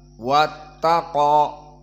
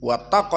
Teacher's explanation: wawnya dalam keadaan muraqqaqah, dan begitupun ta muraqqaqah kecuali qaf. Wattaqo, maka qaf di sini min huruf al-mufakhomah.